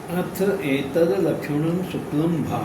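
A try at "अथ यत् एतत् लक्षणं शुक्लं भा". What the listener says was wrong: अथ जत एतद् लक्षण शुक्लम भा, जत, जत मत छोड़िए, जत एतद्, जत, हाँ यत,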